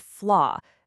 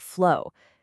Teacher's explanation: In the target word flaw, a serious error in lip rounding and tongue placement shifted this into an o sound, making it sound exactly like flow.